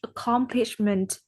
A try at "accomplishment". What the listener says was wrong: Because the last time I just heard something like a huge accomplishment and without a com or something like accomplishment.